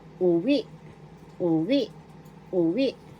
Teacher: Second syllable we. The accent is in the second syllable.